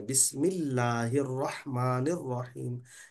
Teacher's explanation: पहली मरतबा मोटा पढ़ा गया था लाम। लाम को बारीक पढ़ना है · यहाँ पर रहमान में भी और रहीम में भी जो है रा को मोटा पढ़ेंगे। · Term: लाम बारीक